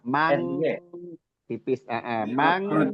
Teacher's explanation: Ikhfa abna atau ab'ad ya yang lebih dominan ke suara ghunah. Namun suara ghunah di sini enggak tebal, enggak ada sifat istilah beda dengan qof.